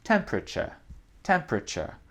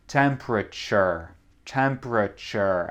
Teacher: Vous remarquez que le dernier R, c'est très doux en anglais d'Angleterre.